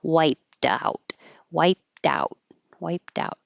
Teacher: But when there's a vowel after it here, wiped out, now the ED that should sound like T, wiped, turns into a D